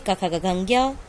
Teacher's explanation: का वर्ग में क, ख, ग, घ, ज्ञ, इसका उच्चारण स्थान है कंठ।